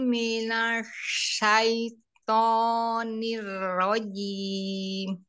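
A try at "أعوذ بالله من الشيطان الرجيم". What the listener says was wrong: Ya, sudah bagus, tinggal nanya, jangan ditebalkan ya. Tadi nanya kayak tebal tadi ya. sudah lumayan, tapi masih tebal sedikit memang. Jangan dicekungkan lidahnya. Shin juga enggak, bukan huruf tebal kan? Himinash, dia tafasi aja. Himinash syaitonirrojim. Shinnya itu dia tafasi menyebar, tapi lidahnya dirilekkan gitu, jangan diangkat. Ini nash gitu, dia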